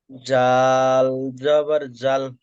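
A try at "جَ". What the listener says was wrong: জাল নয়, যেটা জাল না, জাল জাবার জা, ভালো করে পড়েন।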